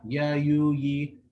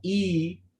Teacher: But when you say e, your jaw is more lowered. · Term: ya madda